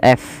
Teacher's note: sifatnya namanya hams, yaitu mengalirnya nafas. Nah, dia ketika ada fa alirkan nafasnya.